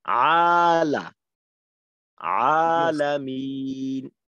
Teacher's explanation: এই আ এবং লা, এই দুইটার মাঝে যেন আওয়াজটা বন্ধর মতো হয়ে না যায়, মিলিত